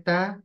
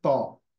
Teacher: ता की आवाज बारीक है त की आवाज मोटी है